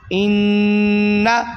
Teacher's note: یہ نون پہ تشدید آ گئی ہے تو اس لیے غنہ کیا جائے گا